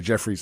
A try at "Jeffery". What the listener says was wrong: Ery, no S. Jeffrey.